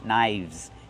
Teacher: The F changes to a V sound. Link the sounds, knives.